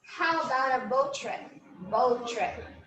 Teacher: instead of repeating the sound, we can just make an elision.